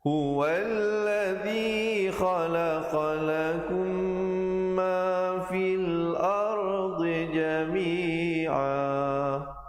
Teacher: Huwallazi di ujung lidah, khalaqalakum. Di situ idgham mislain, mim mati bertemu mim, dengungkan 2 harakat.